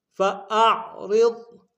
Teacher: ما فی قلوبہم فاعرض، فاعرض، حمزہ کو عین کے سامنے لائیں گے، عین کو ہرائی سے ادا کریں گے، عین کو باریک نہیں کریں گے، حمزہ بن جائے گا اور معنی مطلب تبدیل ہو جائیں گے۔